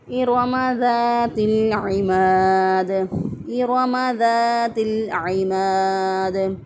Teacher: عین کو وسط حلق سے ادا کریں گے، اگر کوئی وسط حلق سے ادا نہ کرے تو غلط ہو جائے گا۔